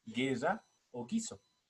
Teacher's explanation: lo que ocurre con los grupos fónicos G y gui que llevan una u que si bien aparece en la escritura no se pronuncia